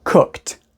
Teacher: we go right from the K to the T sound